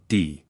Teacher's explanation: The consonant D, for example, is pronounced by clapping the tongue above the upper teeth